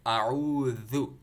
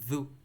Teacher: تو اعوذ، منہ کھول کر کے اعوذ، ذال، یہ جو ذال ہے نا یہاں پر، یہ جو نظر آ رہا ہے آپ کو ذال، یہ ذال کہلاتا ہے، سافٹ، اس کو پڑھتے وقت آپ کی زبان باہر آتی ہے، ذو، زبان کی نوک اور اوپر کے ٹیٹ کے ساتھ ٹچ کرنے سے یہ ذال جو ہے پڑھا جاتا ہے